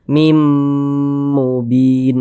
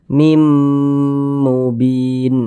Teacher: Cara membacanya itu bunyi tanwin dimasukkan ke huruf mim, kita baca mim kemudian digunnahkan. Jadi suaranya itu kita tahan, kita panjangkan sejenak. Nah, sepanjang 2 harokat. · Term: idgham bil gunnah